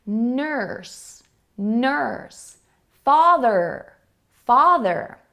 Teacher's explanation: This is an ER sound, which is also called in many cases an R-colored vowel, because we have vowels like U that actually sound like an ER.